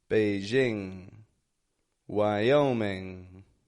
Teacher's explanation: I'm not making a g at the ending there I'm not going Beijing Wyoming but I'm holding it Beijing Wyoming